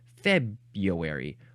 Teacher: Maybe it was just too hard for people to say February because they're like, well, but I want to say the Y sound and I can't go February. So I'm just going to change the R to a Y sound.